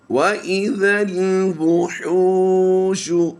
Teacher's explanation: حا واو پہ حو کو ہم نے لمبا کرنا ہوتا ہے کیونکہ واو مدہ ہوتا ہے